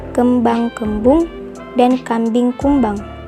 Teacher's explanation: bunyi p b dan m adalah sama-sama bunyi bilabial